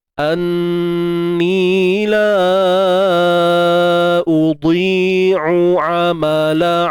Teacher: Kemudian huruf dad tuan-puan, jangan lupa kita kena tebalkan. Huruf dad kena tebalkan dia. Anni la udhi'u amala.